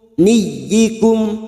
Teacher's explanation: Jangan dibaca panjang hanya masuk pada huruf ya yang bertasdid